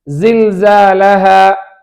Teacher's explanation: நுனி நாக்கிலிருந்தும் மேல் கீழ் பற்களுக்கு இடையிலிருந்தும் ஜா உண்டாகும்